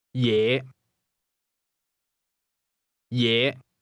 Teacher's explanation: Is pronounced with a low rising tone.